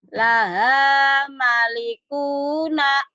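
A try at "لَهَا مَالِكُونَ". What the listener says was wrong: Ma-nya panjang. Laha malikuna.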